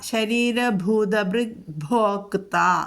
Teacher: ഭോക്ത ക് ഒന്ന് ഉച്ചരിക്കണം ട്ടോ ചെറുതായിട്ട്